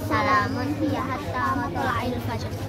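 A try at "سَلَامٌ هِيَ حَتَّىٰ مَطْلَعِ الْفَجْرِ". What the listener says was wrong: Buru-buru nanti panjang pendeknya enggak kebaca.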